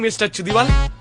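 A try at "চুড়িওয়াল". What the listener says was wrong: It's not চুদিওয়াল, it's চুরিওয়াল। এটা উচ্চারণ হচ্ছে চুরিওয়াল, চুদিওয়াল না। তোর মাকে বলছি না চুরিওয়াল, বাঙালিদের দর্শন্য র হয়, সেই জন্য ইংরেজিতে ডি লিখতে হয়।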